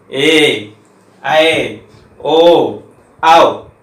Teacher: इनको टाइम देते हैं क्योंकि इनका ह्रस्व नहीं होता, ये छोटा होता ही नहीं है, इसलिए क्या बोलते हैं ए ऐ ओ औ, तो दीर्घ होते हैं।